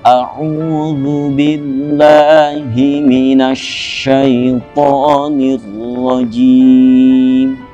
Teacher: Harful halq. Nah, ain adalah salah satu huruf halqi, huruf yang keluar dari tenggorokan